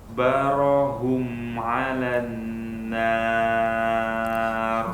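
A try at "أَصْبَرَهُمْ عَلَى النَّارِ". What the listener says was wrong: Sudah bagus, nunnya dipanjangkan sedikit lagi gunnahnya.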